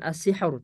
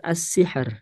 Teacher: ro sukun sebelumnya sukun sebelumnya kasrah maka dia dibaca tipis